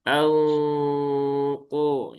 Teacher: Ikfanya di tebalkan dulu ya. Kalau anqo nah itu kan dengungnya kan masih tipis. Jadi ikhfa yang tebal itu dia ee tebalnya sejak awal dia berdengung.